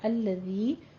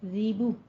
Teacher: زی نہیں کہنا ہے، سیٹی کی آواز نہ آئے، نرمی کے ساتھ پڑھنا ہے